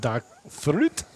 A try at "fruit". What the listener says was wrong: fruit. Can you not roll your R's?